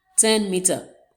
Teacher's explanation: The second word is meter, and the stress is placed on the first syllable. It has two syllables.